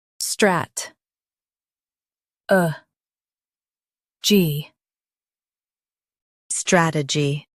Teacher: Stress the first syllable, strat, and keep a gy light.